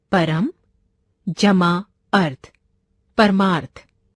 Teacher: परम का अंतिम वर्ण म यानी अ और अर्थ का प्रथम वर्ण अ दोनों ही ओर ह्रस्व स्वर हैं, परंतु दोनों के मेल से दीर्घ आ का निर्माण हुआ है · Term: दीर्घ संधि